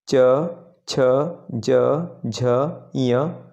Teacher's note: च वर्ग च, छ, ज, झ, ञ तालुव्य के अंतर्गत आते हैं